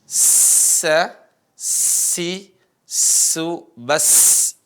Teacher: Jadi ada desisnya, ada suara desis yang begitu terdengar, nyaring ya. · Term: sin